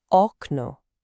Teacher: The stress is on the first syllable, which is the second to last. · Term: Penultimate stress